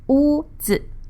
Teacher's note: So that's WU, first tone, 屋, and ZI, Z, that's neutral tone.